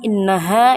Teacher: gunnah musayyadah karena ada huruf nun yang bertasydid cara membacanya mendengung yang disangatkan